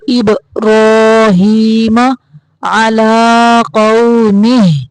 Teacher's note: را کو موٹا پڑھنا ہے اور یہ جو با ہے اس کو کڑکڑا کریں گے